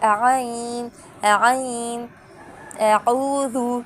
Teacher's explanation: عین کو بھی ہم حلق کے درمیانی حصے سے ادا کریں گے